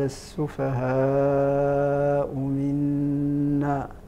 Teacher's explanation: يمد لورش ستة حركات، ولقالون ولحفص أربع حركات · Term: المد الواجب